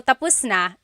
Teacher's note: It's one of those words that has a different meaning depending on the pronunciation or depending on the context of the phrase. So when it's tapos, when the emphasis is at the end, tapos, that means finished.